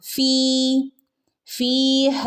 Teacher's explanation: ഫിന്റെ അടുത്ത് ഒരു യ മദ് ഉണ്ട് അല്ലെ അവിടെ രണ്ട് ഹറക്കത്ത് നീട്ടുകാട്ടോ